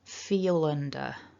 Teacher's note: because feel ends with a consonant and under begins with a vowel sound we can link those together feel under it's almost like the l jumps